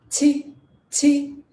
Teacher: t is like the air flow stronger and shorter